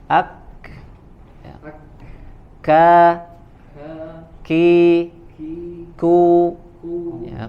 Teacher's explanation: Kalau kaf ya ada hams keluar atau angin yang keluar, sedangkan huruf qaf tidak ya. · pangkal atau makhraj huruf kaf itu ada di pangkal lidah ya, menempel sebagian ke langit-langit lunak, sebagian lagi ke langit-langit keras ya, berada di antara keduanya ya.